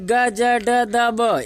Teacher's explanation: ग ज ड द ब इसको बोलने में कम समय लग रहा है मतलब अल्पप्राण